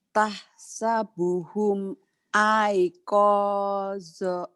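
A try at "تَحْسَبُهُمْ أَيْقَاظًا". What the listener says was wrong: jadi panjang zoknya ujungnya ya lagi. Tah sebuhum tah sebuhum ayqaza.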